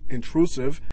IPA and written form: ɪntr'usɪv (Intrusive)